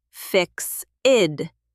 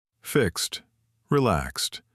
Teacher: It sounds like a sharp T at the end.